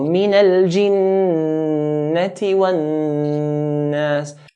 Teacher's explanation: Hold the noon in the word jinnah and nas.